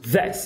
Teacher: Aqui não ocorre nenhum fenômeno fonológico, mas eu sempre gosto de falar para o aluno brasileiro que esse I é pronunciado com aquele E mais relaxado